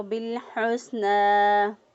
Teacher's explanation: ہا کو وسط حلق سے ادا کیا، سین کی ادائیگی میں سیٹی جیسی آواز پیدا کی، اور نون کھڑی زبر کو 1 الف کے برابر لمبا کیا.